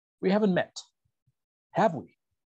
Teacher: Voy a ascender mi entonación en mi tag, porque le estoy diciendo a la persona, no estoy seguro, estoy casi, incierto, estoy 100% incierto de que no nos hemos conocido. Entonces, voy a usar un rising intonation, una entonación ascendente